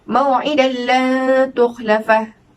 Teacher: cara bacaannya perlu dimasukkan huruf nun mati atau tanwin itu ke dalam huruf idgham bila gunnah tanpa dengung